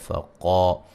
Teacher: فقا قاف کو موٹا ادا کریں گے